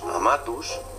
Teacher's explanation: decimos amatus porque la penúltima, la A, es larga. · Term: la ley de la penúltima